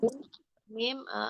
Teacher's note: Mim asafatain, bertemunya dua bibir dirapatkan disertai dengan gunah